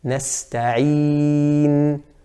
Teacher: the noon at the end has a ghunnah, and the noon at the beginning, na, has a ghunnah as well. But just like we said with the meme, the length of the ghunnah is slightly different.